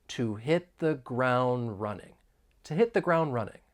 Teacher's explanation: And it sometimes happens with the t and d sounds when they come between two consonants. So that final D in the word ground, it comes between two consonants, so it elides. You don't really hear it. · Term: elision